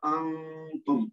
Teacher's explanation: اس کے بعد جو انتم ہے یہ نون ساکن جو ہے اس کے بعد ہے تا جو کہ حروف اخفا میں سے ہے, تو یہاں پہ نون ساکن کا اخفا ہوگا, انتم ایسے کر کے پڑھیں گے.